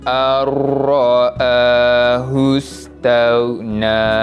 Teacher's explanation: Yang mana kita dah belajar tadi, huruf ra adalah di antara huruf-huruf idgham bila gunnah. Maka cara bacaan nun mati itu perlu dimasukkan kepada huruf selepasnya dan dibaca tanpa dengung. Maka hamzah baris atas tu terus masuk pada huruf ra yang berbaris sabdu.